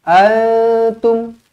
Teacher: Nun kosong bertemu dengan ta, didengungkan dua harakat. Sembunyikan huruf nun.